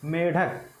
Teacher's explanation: जीवा जो है मूर्धा को स्पर्श कर रही है और बहुत झटके के साथ नीचे आ रही है। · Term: द्विगुण व्यंजन